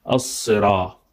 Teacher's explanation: It has to be as-sira with sad. Sad is different from sin. Sin is like S, but sad is a little bit heavier, recited with full mouth.